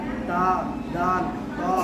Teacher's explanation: ता दाल त इन तीनों का मखरज एक ही है। जबान की नोक ऊपर के सामने वाले दोनों दांतों के जड़ से मिलकर ता दान त अदा होता है